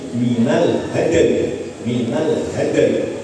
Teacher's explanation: Ini namanya wakaf yang di situ bertemu sukun dua, sukun karena diwakafkan, sukun karena sebelumnya memang ada sukun ya.